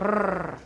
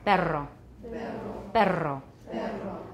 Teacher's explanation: voiced alveolar trill